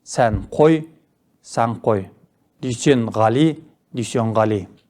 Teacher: Түбірдің соңғы дыбысы қ, к, ғ, г дыбыстарының алдынан келсе, айтылуда н дыбысы өзгеріп, ң дыбысына айналады. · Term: Регрессивті ассимиляция